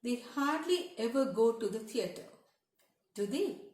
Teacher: the voice goes down at the end when you say do they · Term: falling intonation